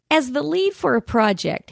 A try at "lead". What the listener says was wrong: The word is lead. It sounds like leaf. It's a leaf for a project. Lead.